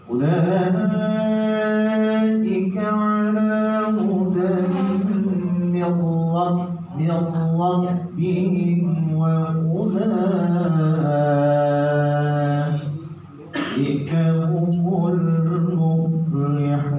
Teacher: Tadi idgham di gunnah, ini idgham bila gunnah, tidak didengung tapi dimasukkan tetap oh-nya, nunnya tetap dimasukkan, nunnya dimasukkan ke oh ya.